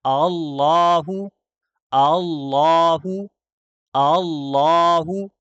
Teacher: پہلا حمزہ ہم واضح کر رہے ہیں تحقیق کے ساتھ، دوسرا حمزہ میں ہم تسہیل کر رہے ہیں کیونکہ پہلا حمزہ قطعی ہے، دوسرا حمزہ وصلی ہے۔